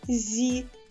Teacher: перший звук з приголосний м'який позначаємо двома рисочками